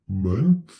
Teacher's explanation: So just a little side note, TH in English, so we always stick our tongue between our teeth ever so slightly to pronounce the TH, and sometimes TH is voiceless, like in month. There is just quite simply air coming through my mouth with the TH. There's no vibration in my throat.